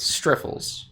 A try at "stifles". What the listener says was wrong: There's no R. That doesn't mean you can just shove them into any word.